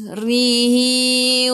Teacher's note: Ri baris bawah senyum. Ra baris bawah senyum. Kena baca dengan nipis. Ha dhamir bertemu dengan selain hamzah mad silah qasirah baca 2 harakat.